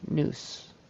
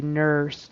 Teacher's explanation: nurse, instead of getting that good vocalic ER, it sounded more like an or an oo, noose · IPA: /ɝ/